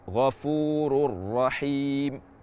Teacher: tanwin tidak kita baca dan tidak ada gunah sama sekali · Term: bila ghunah, idgham bila gunnah